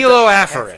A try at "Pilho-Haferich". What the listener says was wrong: that first consonant is not that consonant. It's one that sounds like it, but it's not.